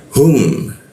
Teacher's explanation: huruf hu di tenggorokan bagian bawah